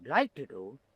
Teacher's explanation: he adds an interesting raising terminal and a little bit of a stress in to do.